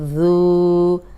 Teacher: ذال نرم پڑھیں گے، سیٹی کی آواز نہیں آئے گی، اگر ذرا سی بھی سیٹی کی آواز آئی تو زا بن جائے گا۔ یہ ذال ہے، اوپر سامنے کے دو دانت ہیں ان کے اندرونی کنارے پہ زبان رکھ کے ادا کریں، سیٹی کی آواز نہیں آئے گی